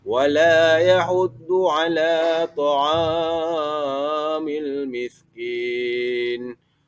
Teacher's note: Pada ayat ketiga terdapat huruf mad pada kalimat ta'ami, iaitu huruf fathah bertemu dengan huruf alif. Jadi pada kalimat ta'am itu dipanjangkan juga dua harakat.